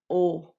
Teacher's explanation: E você vai fazer esse movimento O. A diferença do O pro U, presta atenção que o, a boca abre mais.